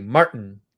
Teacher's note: So there's no noise there where the T is. You don't say Martin, you say Marty. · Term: glottal stop